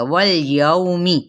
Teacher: یو پہ واولین کا قاعدہ اور میم کی زیر لام کے ساتھ ملائیں گے، لام کو ہلائیں گے نہیں